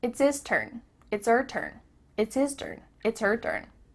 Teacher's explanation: The H at the beginning of his and her is cut off.